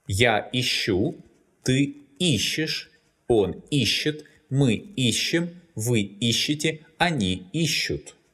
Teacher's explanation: The stress is variable because the infinitive искать is stressed on the last syllable.